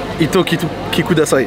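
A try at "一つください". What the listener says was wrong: Hitotsu. Hitotsu. Tu souffles le H. Hitotsu. Kudasai. Hitotsu kudasai. Là, ça va, il y a juste le hitotsu, il faut bien le souffler au début.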